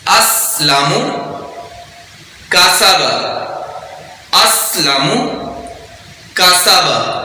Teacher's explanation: سین کو سیٹی کے ساتھ پڑھیں گے اور باریک پڑھیں گے